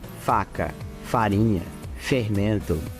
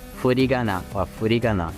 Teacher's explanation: Português é lábio dental, japonês é bilabial.